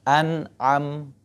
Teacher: Huruf mim itu di bibir karena termasuk huruf syafawi.